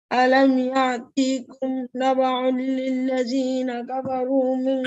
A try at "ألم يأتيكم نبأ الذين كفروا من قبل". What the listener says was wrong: مش not لل ألم يأتيكم نبأ الذين